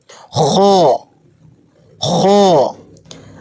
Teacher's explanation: حلق کے اوپری حصے یعنی ادنیٰ حلق سے جیسے بلغم نکالتے وقت آواز آتی ہے